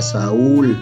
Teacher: la U que es débil aquí se convierte en fuerte. Cuando en español una vocal débil se convierte en vocal fuerte, la marcamos con acento ortográfico, fíjense, y se separa.